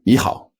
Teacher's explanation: So when followed by another third tone, the first third tone becomes a second tone.